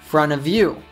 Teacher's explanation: the T gets absorbed by the N in front, and then it links with of.